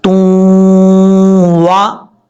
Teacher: یہ جو شد ہے یہ شد ہو یا نہ ہو، اگر قانون پورا تو ڈیفینیشن تعریف پوری ہو رہی ہے تو اس واو کے اوپر شد ہو یا نہ ہو وہاں پہ غنہ بھی کیا جائے گا اور اس کو ملایا بھی جائے گا، یاد رکھیے گا۔ دو پیش کی تنوین کے بعد واو ہے تو اس کا مطلب یہاں پر ادغام ہو رہا ہے، اور ادغام غنہ کے ساتھ۔ تا واو دو پیش، تو واو زبر وا، تو وا، اس طریقے سے واو کو پڑھتے وقت ہون گول کریں گے۔